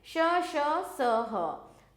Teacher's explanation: इन व्यंजनों के उच्चारण में वायु तेज गति से मुंह के भागों से रगड़ खाती हुई बाहर निकलती है, जिससे ऊष्मा यानी कि गर्मी उत्पन्न होती है, इसलिए ऐसे व्यंजन ऊष्म व्यंजन कहलाते हैं।